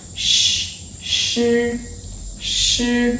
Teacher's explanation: So the air flows out between the narrow space of the tongue body and hard palate, squeezing out here like shi, shi.